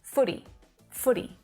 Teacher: that flap T sound it sounds more like a d